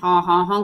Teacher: it's got a lot of that very intense vocal fold sound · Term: constricted here in the throat